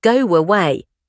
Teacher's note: If I say go away, I actually insert a tiny W sound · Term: Intrusion